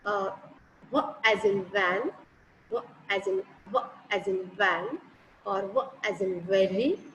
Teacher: The place of articulation is same. Lower lip and upper teeth.